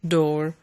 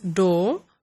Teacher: the use of post-vocalic R is retained, and in other dialects it is dropped. So in some varieties, people would pronounce the word door as door, dropping the last ra sound, and some would pronounce the last ra sound and say door.